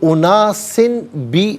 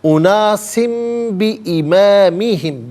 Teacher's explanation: اسے میم سے چینج کر کے میم کی آواز کو غنّے کے ساتھ ادا کرتے ہیں۔ تو اناسن بی نہیں، اناسم بی امامہم، بی علیحدہ ہے، امامی علیحدہ ہے، ہم علیحدہ، تو بی امامہم، اناسم بی امامہم۔